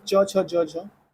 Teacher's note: च छ ज झ तालव्य व्यंजन है।